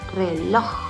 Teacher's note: pronunciamos reloj, entonces la sílaba tónica es en loj